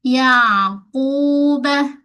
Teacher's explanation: Jangan bunyi ya, itu hamzah. Ain mesti kena lunak tengah kerongkong. Yaquba. Pada ku, qaf tebal.